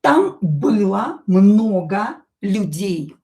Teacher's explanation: O, not stressed, will be pronounced as a.